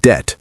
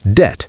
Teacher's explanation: notice that the B in debt is silent · Debt is pronounced debt, not debt with the B sound.